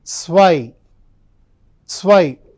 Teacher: Whenever you pronounce Z, it should start with a T and S sound.